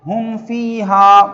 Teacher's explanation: ہم فیہا، ہاں میم پیش ہم، فا یا زیر فی، ہم فی، ہا الف زبر ہا، ہم فیہا، اس کو اظہار شفوی کہتے ہیں۔ یہاں پر میم ساکن کے بعد فا آیا ہے، با بھی نہیں آیا، میم بھی نہیں آیا، تو اس لیے یہاں پر اخفا بھی نہیں ہوگا، غنہ بھی نہیں ہوگا۔